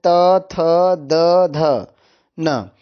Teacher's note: दंत्य वर्ण यानी जिसका उच्चारण स्थान दांत से होता है